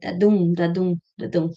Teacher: each foot consists of 2 syllables, an unstressed followed by a stressed one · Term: iambic pentameter